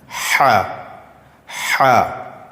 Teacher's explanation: حلق یعنی جو ہمارے گلے کا حصہ ہے، اس کے بیچ سے ح ادا ہوگا۔